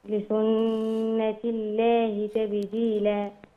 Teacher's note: لسنه حرف غنه مشدد نغنه بمقدار حركتين